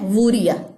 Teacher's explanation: इसको ऊ नहीं पढ़ना है, इसको वू पढ़ना है